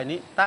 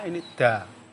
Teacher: kerjanya lidah ketika mengucapkan ta itu ngena pada akar gigi atas itu kecil. Istilahnya kalau Jawa itu nutul gitu ya.